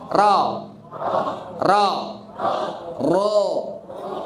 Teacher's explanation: Ro-nya ro tafkhim ya, ro tafkhim ya. Karena dia berharokat fathah